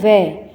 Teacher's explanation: तो इसमें जैसे वै होता है वै, तो वै क्या है? ये दंत और ओष्ठ के दोनों के प्रयोग से ही इसकी ध्वनि निकलती है। तो वै का जब हम उच्चारण करते हैं तो इसमें हमारे होठ भी काम आते हैं और दंत से भी स्पर्श होता है, वै। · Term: दंतोष्ठ